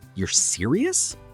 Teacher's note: Said with a rising voice means I can't believe it. · Americans communicate a lot through intonation, how your voice goes up and down. A rising tone can make a statement sound like a question.